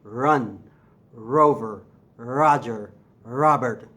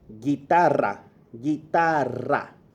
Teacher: And then the harder I do it, the more the r sound comes out. So I'm not really making r back here like in English.